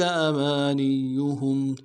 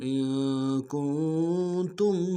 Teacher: ہا کو میم ساکن کے ساتھ ملانا ہے، میم ساکن میں غنہ کریں گے